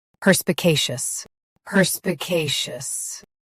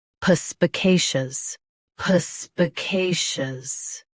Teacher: US starts with per. UK starts with puh.